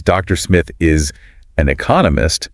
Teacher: the emphasis goes on Economist because that's the new bit of information